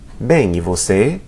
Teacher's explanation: often the vo is left off and it's just bem e você?